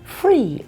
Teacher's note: a lot of people in England are saying free instead of three now